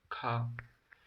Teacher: स्पर्श व्यंजन कंठ्य ध्वनि अघोष और महाप्राण ध्वनि है